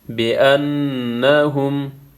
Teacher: نون مشدد ہے، یہاں پہ غنہ ہوگا۔